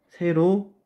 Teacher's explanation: 아와 이라는 단모음이 만나서 새로운 에라는 단모음이 되었기 때문에 얘를 모음 축약으로 볼 수가 있습니다